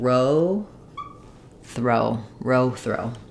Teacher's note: And then for this one, we have the voiceless TH, the R, and the O diphthong.